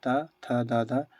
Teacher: त थ द ध ये सभी दंत ध्वनि कहलाता है। ल भी एक दंत ध्वनि है।